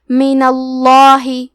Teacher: لفظ الجلالہ کے لام کا حکم ہے تفخیم تو ہمیں حرف اللام کو موٹی آواز میں پڑھنا ہے۔